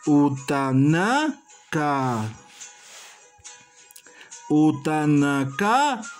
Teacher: recae netamente la entonación de la voz fija en la penúltima sílaba